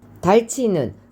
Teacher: 흐와 즈가 만나서 츠가 됐지요. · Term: 거센 소리